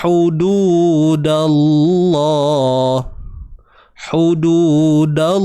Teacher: tengah kerongkong, huruf ha pedas kan, kita sempitkan dia. Hududu 2 harakat juga ni, waw mat sebelumnya baris depan.